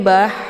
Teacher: Kemudian bah, di sini ada ha sukun, ya. Ini ha kecil atau biasa sering dinamakan dengan ha pedas, ya. Jadi cara bacanya hanya dialirkan dengan suara yang mendesis ya.